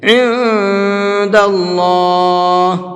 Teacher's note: یہاں پر اللہ کے لام کو منہ بھر کے پڑھیں گے، اس لیے کہ اللہ کے لام سے پہلے زبر ہے، اور اللہ کے لام سے پہلے زبر ہوتا ہے تو اس اللہ کے لام کو منہ بھر کے پڑھتے ہیں۔